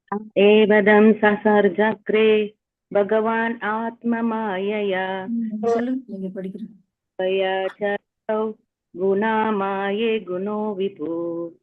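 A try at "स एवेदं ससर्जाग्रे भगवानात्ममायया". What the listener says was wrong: Nice. Thank you.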